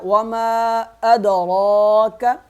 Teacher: وما یہاں کریں گے مد تین الف کے برابر اور دال پہ کریں گے قلقلہ ، وما ادراک را کو موٹا پڑھیں گے، وما ادراک ما